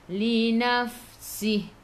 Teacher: Fa ni hurufnya hamas, kena ada angin.